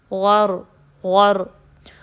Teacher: را میں تھوڑی سی تکرار پائی جاتی ہے جو کہ ایک ریپیٹیشن کی ساؤنڈ ہے۔